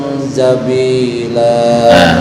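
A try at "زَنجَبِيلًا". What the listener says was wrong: Bukan jabila ya. Jabi. masih tercampur dengan jim. Zanjabi.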